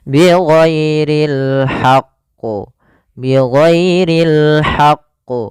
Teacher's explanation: karena dia ada huruf tasdidnya ditekan dulu qnya baru ditasdidkan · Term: Qalqalah Kubro